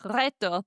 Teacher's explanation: the R is rolled when it appears at the beginning of a word.